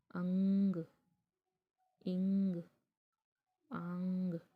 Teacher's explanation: अंग में नाक और मुंह से टकरा कर आवाज़ निकली, यानी दोनों से निकल रही है। तो जब नाक और मुंह दोनों से आवाज़ निकले, टकरा कर निकले, ऐसे स्वरों के उच्चारण पर जब हवा जो है नाक और मुंह दोनों से टकरा कर निकलती है, तो ऐसे स्वरों को हम लोग क्या कहते हैं, जी, अनुनासिकता।